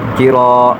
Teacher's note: بن، کتابا، وقفا کتابا، کاف زیر کی، را الف زبر را، را کو ایک الف کھینچ کر پڑھیں گے